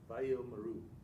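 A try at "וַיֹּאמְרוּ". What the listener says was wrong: Vayomru. Because it's a silent shava. Vayomru. If there was two shavas next to each other, then it would be. The dots. There's no vowel pointing next to it.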